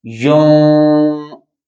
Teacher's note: یون نون چھپا کے ادا کیا جا رہا ہے، تو نون کو اس کے مخرج میں چھپا کر ادا کرتے ہیں، اس کو بھی غنہ کہا جاتا ہے۔ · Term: اخفا